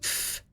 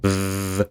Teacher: the voiced one is the same, except you make your voice box vibrate